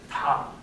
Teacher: When you do ta, you actually hold your voice back about 30 milliseconds